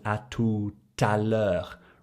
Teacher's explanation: because tout ends in a T and the next letter is a vowel, you create that liaison